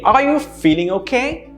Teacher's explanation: again my intonation goes up